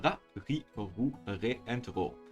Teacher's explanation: When pronouncing R syllables in Japanese, the sound needs to be between an English R and L sound.